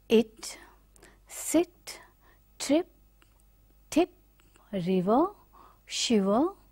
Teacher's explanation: it is not as closed as like E, it is just above half close and the rear part of the front tongue is raising and then closing. That is why we call this like in tip, E sound, centralized front unrounded vowel just above the half close position.